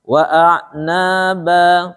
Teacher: Karena dia 2 harokat, maka antara na yang mad tabi'i dengan ba yang mad iwad harus sama panjangnya